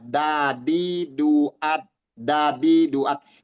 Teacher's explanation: Sementara dal ujung lidah, ujung lidah, dadi duat, bertemunya ujung lidah dengan gusi bagian atas, dadi duat, ya, atau di belakang gusi ya, bagian atas, gusi atas, dadi duat, pangkal gusi bagian atas tempat ketemunya, itu bedanya.